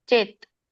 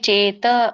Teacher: ಚೇತ ಅನ್ಬೇಡಿ ಚೇತ್ ಯಾಕಂದ್ರೆ ವ್ಯಂಜನ ಇದೆ